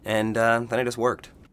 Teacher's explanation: did pronounce the D he linked it to the next word beginning with a vowel